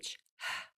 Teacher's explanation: so in hamburger we have that breath voiceless breath only